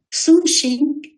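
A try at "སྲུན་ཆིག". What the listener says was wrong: Sunchik, attention, c'est un chik, c'est pas un ching, hein, c'est un chik.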